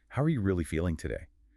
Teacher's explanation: That emphasis on really signals you are prepared to listen to the truth.